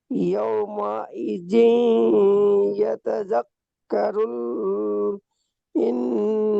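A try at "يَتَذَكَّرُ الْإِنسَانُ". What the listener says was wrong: ইয়াতাযাক্কারুল বলে গুণনা হবে না, ইয়াতাযাক্কারুল।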